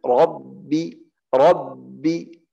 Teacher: Yang salah di Rabbi karena ra tebal, ada orang kasih ba tebal juga.